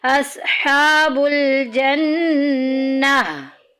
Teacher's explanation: اور اگر گول تا ہو تو اس پہ وقف کرنے کا طریقہ کیا ہوتا ہے کہ گول تا کو جب بھی وقف کرتے ہیں تو ہائے ساکنہ سے بدل دیتے ہیں